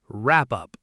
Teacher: It creates a new syllable that sounds like pup. Say it smoothly with no space in the middle. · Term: connected speech